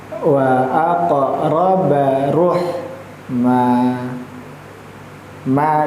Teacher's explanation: Pada huruf qof sama qalqalah sugra dipantulkan